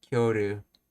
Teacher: When spoken quickly, the I and Y sound both palatal merge. Okay, the I vowel is absorbed and the Y sound becomes a glide, resulting in kyoru. The K and Y together form a palatalized consonant which sounds close to kyo.